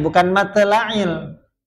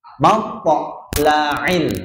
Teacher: jadi qalqalahnya bunyinya po. Bukan te.